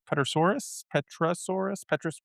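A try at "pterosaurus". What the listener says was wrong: The P is silent.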